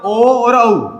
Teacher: ओ और औ का उच्चारण स्थान कंठोष्ठ है